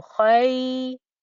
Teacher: I've not got any ghunna going on here. It's just a kha joining up to a ya.